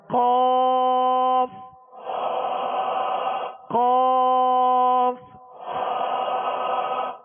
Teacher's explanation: زبان کی جڑ اور تالو کا نرم حصہ، اس سے قاف ادا ہوتا ہے جو پر پڑھا جاتا ہے، یعنی دو نقطے والا.